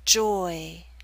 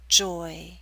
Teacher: your lips should be more spread at the end of the word Joy again you're moving more towards e at the end so you're